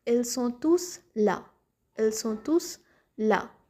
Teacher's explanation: Then the second one, where the final S is pronounced, that is when this tous is alone or at the end of the word, that is without any noun. We pronounce it as tous, that is the pronounced final S. We pronounce the final S.